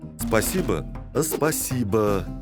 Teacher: прибавляет гласную к двум согласным делая из них два слога